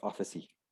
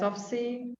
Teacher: And we tend to add a vowel after a consonant.